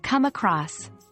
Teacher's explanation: the main stress is on come which changes its meaning from the standard verb come to mean